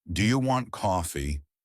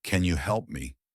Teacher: Your voice should rise at the end.